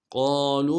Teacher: قالوا قاف کو موٹا کرنا ہے، قاف کے ساتھ الف مدہ ہے